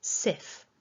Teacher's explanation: So here's the script from the Cambridge Dictionary Online, and we can see that we've got 5 syllables in this word according to the dictionary usage, and that syllable 2 is the stressed syllable. So the strongest part of the word is sif